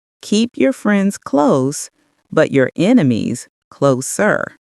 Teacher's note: Link friends close smoothly, then slightly emphasize enemies closer. Shadow with contrast. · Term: contrast and emphasis